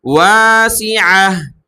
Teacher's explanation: جب رکے تو واسعہ، گول تا کو ہا میں تبدیل کر دیں گے وقف کرنے کی صورت میں